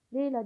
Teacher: Məsələn, Leyla deyəndə vurğu birinci hecaya düşür.